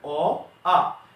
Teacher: এই দুটি বর্ণ উচ্চারিত হয় কণ্ঠ থেকে